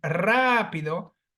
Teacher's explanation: always marked with an accent see that has three syllables and because the phonetic accentuation falls on the third syllable before the end